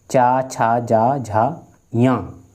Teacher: चा छा जा झा या ये किससे रहेंगे, तालव से